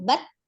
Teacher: huruf ta juga siddah ya tidak mengalir suaranya hanya alhams mengalir nafas